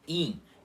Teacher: E o jeito que é pronunciado na língua portuguesa, que é in, é uma vogal nasal e a língua não encosta nos dentes